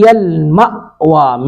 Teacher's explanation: میم پر تھوڑا سا جھٹکا لگائیں گے کیونکہ حمزہ پر جزم ہے